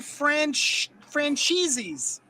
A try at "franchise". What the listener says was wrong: Yeah, you usually put an extra S on the end of that particular word. It's a weird quirk.